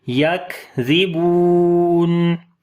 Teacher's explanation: اب سانس جاری کریں گے صفت ہمس کی وجہ سے، یک یک. ریبور، زال کو نرم پڑھیں گے، با کو لمبا کریں گے، واو مدہ ہے